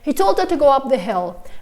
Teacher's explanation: I did pronounce the H because it doesn't disappear naturally.